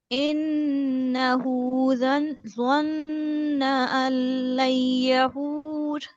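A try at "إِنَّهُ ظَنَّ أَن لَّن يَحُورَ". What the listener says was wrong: ये अक्सर स्टूडेंट्स करते हैं कि नून भी पढ़े होते हैं साथ में, यहाँ पर नून नहीं पढ़ा जाएगा। आप समझे कि लाम को डायरेक्ट पढ़े आप। अल्लन यहूर।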